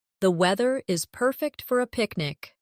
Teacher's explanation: Stress perfect to express the feeling.